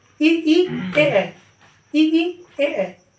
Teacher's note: अग्र देखिए, अग्र जो है आगे वाले, जीव के आगे वाले हिस्से में, ई, जब हम ई करते हैं या ए करते हैं तो जीव का आगे वाला हिस्सा हिलता है